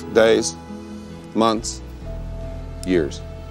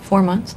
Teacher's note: Ou encore, vous aurez d'autres personnes qui vont changer le son du TH en un T. Mais la prononciation correcte, c'est bien de faire le son du TH suivi du S.